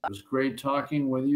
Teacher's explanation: The Z or voiced Z sound in was links to great, creating an almost zgreat pronunciation.